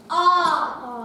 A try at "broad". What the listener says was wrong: Ooh, it's O, the O of boat. It is O, the O of boat. Not ah, ooh, ooh, ah. Write O, the O of boat.